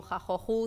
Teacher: Aquí, por ejemplo, con las 2 manos hacemos como que ruge, ¿de acuerdo? Es un fonema velar, por lo tanto, hacemos referencia a la zona donde se produce. Y el sonido también que hace pues como una fricación, que es como se produce, ¿no?